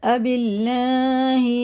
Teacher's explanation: اللہ کا لام زیر سے تو باریک پڑھا جائے گا